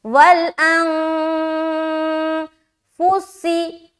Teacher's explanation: تو یہاں پر ہم اخفا کریں گے، اخفا کے معنی ہے چھپانا، نون کی آواز کو ہم ناک میں چھپاتے ہیں جو کہلاتی ہے اخفا کرنا۔